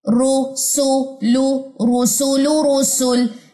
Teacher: لام کی پیش جو ہے وہ ڈراپ ہو گئی ہے